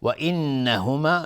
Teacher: نون تشدید دار 2 حرکت غنه میدیم